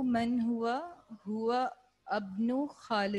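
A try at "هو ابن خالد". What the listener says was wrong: इब्नु या वैसे ये हमजा जो है इसको मिला के पढ़ते हैं तो ये फिर प्रोनाउंस नहीं किया जाता है, ठीक है? ये शुरू में पढ़ेंगे वबनु मन हुआ, हुवबनु खालिदिन,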